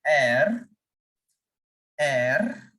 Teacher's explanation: French people pronounce this alphabet like air. They make the sound of the R from the bottom of their throat.